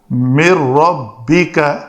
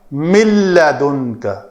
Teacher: لام اور را کی شکل میں ہم اس ادغام کو کہیں گے کہ یہ پورا ادغام ہے، ادغام تام ہے۔ من ربک، ادغام تام ہو گیا۔